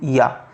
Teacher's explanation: या का उच्चारण स्थान हो जाएगा तालु